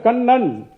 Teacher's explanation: பல்லுக்கு அடியில முதல்ல தொடும் கண், அப்புறம் பின்னால போய் அந்த வாயோடைய ரூஃப்ல ஒரு வாட்டி தொடும் கண் நன். இதுக்கு பேரு டென்டல் ரிஃப்ளெக்ஸ்.